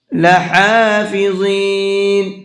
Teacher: ہا کو حلق سے بھی نکالنا ہے اور کھینچ کر کے بھی پڑھنا ہے